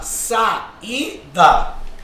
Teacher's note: Esse I, ele não é mais uma semivogal. Ele é uma vogal, ele recebeu um acento tônico, né? Ninguém diz saída. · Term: hiato